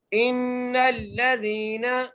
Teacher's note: نون پہ غنہ کر کر نون کو لام سے ملانا ہے